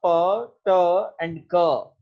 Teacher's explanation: तो when you pronounce प, ट एंड क, ये तीनों प्लोसिव हैं लेकिन तीनों वॉइसलेस हैं